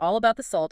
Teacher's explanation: Your tongue moves into the T position, but that release of air is held back. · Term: stop T